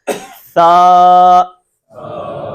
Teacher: اب جو ہے اگلی سلائیڈ کے اندر ہم نے دیکھا تھا کہ کچھ ایسے حرف ہیں کہ جو زبان کی نوک اور اوپر والے دانتوں کے کنارے سے ادا ہوتے ہیں · زبان کی نوک جب تک اوپر والے دانتوں کے کنارے پر نہیں لگے گی سا ادا نہیں ہوگا، بلکہ سین بن جائے گا، حرف بدل جائے گا، اور حرف بدل گیا تو لفظ بدل گیا، لفظ بدل گیا تو معنی بدل گیا۔